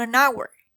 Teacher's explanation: hour also is a spell with H the H is not pronounced here we encountered the silent H